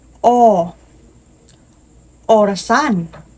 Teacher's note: Ito ay pagitna at patalikod